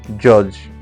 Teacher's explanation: J, voiced, post-alveolar, affricate, as in judge